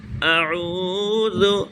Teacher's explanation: اعوذ، اس کے بعد عین ہے، عین درمیان حلق سے عین ادا ہوتا ہے